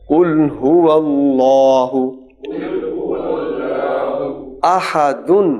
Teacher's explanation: جب وقف کریں گے تو تنوین سائلنٹ ہو جائے گی، تو دال کو جب ساکن پڑھیں گے تو وہاں پر قلقلہ بھی ہوگا.